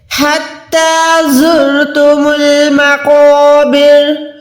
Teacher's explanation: قوف موٹا حروف ہے، اس کے ساتھ جو الف ہے وہ بھی موٹا ہو جائے گا، مقابر نہیں ہے، مقابر، مقابر، ٹھیک ہے۔